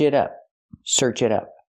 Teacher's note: The T is a fast D.